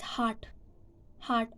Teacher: in british english the lips are completely round in the pronunciation of hot in american in american english the uh corner of the lips